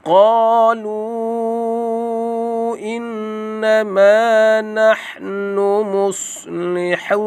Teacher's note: Qalu dibaca dengan panjang sekadar 4 ataupun 5 harakat. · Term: mak jaiz munfasil